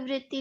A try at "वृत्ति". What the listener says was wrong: So it's not Vriti, it's Vritti.